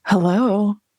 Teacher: It's like a little bit breathy. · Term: phone voice